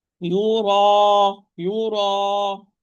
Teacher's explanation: all those are fatha followed by natural mad alif, the heaviest level of tafkhim, because the echo inside the mouth is more. The echo is more, the area is more.